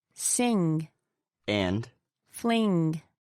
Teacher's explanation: And the last one is the velar nasal.